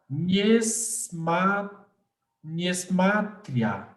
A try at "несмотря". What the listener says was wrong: Несмотря, l'accent sur la dernière voyelle, несмотря. Несмотря, malgré.